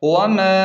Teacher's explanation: اوپر بڑی مد ہے، مد کو خوب کھینچیں 3 الف کے برابر